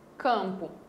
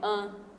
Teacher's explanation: esse M está servindo para nasalizar esse A. Para a fonologia, isso daqui é um único fonema, an.